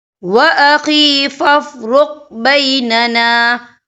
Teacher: یہاں قاف جو ہے ساکن ہے تو یہاں پر کلکلا ہوگا